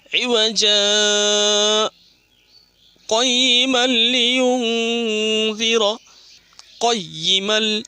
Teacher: تنوین میں ادغام میں بلا گنہ، گنہ نہیں ہوگا، بغیر گنہ کے ساتھ ملا کے پڑھیں گے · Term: ادغام بلا گنہ